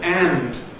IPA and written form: ænd (and)